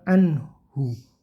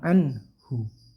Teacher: Jadi terus yang kedua anhu, hunya dibaca kecil ya, anhu, hunya dibaca suaranya kecil, cukup terdengar di telinganya masing-masing